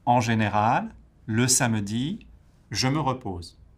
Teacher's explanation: the intonation goes up at the end of général, samedi, because they're positioned at the end of the rhythmic group within the sentence, and then it goes down at the end of the sentence after repose.